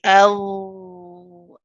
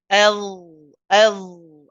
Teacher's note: It is a letter of jahr. So it's a letter that relies on the sound of your voice. So you should hear your voice coming through. And this is why we say the tongue touches the teeth, but you don't press on the teeth so hard.